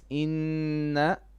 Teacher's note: لفي You're stretching the noon. You're putting an alif on the noon. It's inna, short vowel.